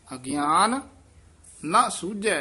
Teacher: ਇਹ ਵੀ ਅਗਿਆਨ ਪਦ ਤੇ ਜਰੂਰ ਯਮਕ ਲਾ ਕੇ ਉਚਾਰਨ ਕਰਨਾ ਅਗਿਆਨ ਨਾਲ ਨਹੀਂ ਕਹਿਣਾ ਅਗਿਆਨ ਨ ਸੂਝੈ ਇਥੇ ਵਿਸਰਾਮ ਮਹਾ ਗੁਬਾਰਾ